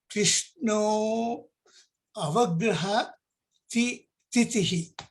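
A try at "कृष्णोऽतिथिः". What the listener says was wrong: You don't say the avagraha chinham. You only say Krishno titihi.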